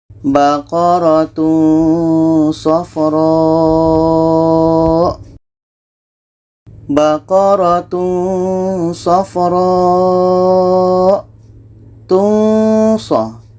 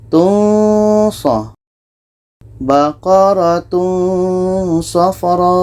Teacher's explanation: Ketika kita sebut tanwin, kita sudah merasakan huruf sha. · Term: ikhfa hakiki